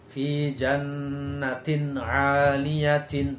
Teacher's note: Nah, di sini ada tanwin atau kasrotain bertemu dengan ain, ya. Jadi membacanya harus jelas.